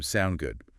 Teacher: the short form sound good again with that upward inflection